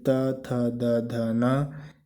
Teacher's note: जिन वर्णों का उच्चारण करने पर जीभ का अग्र भाग ऊपर के दांतों को स्पर्श करता है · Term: दंती व्यंजन